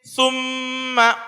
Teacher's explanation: اب یہاں پر جب ہم پڑھیں گے جیسے ثم، اب سا کے اوپر پیش ہے تو طلبہ یہ غلطی کرتے ہیں کہ گننے میں بھی ہونٹ گول کر دیتے ہیں، جیسے ثم، سا کے پڑھنے میں تو پیش ہے تو ہونٹ گول ہوگا، لیکن گننے میں ہونٹ گول نہیں ہوگا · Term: گنہ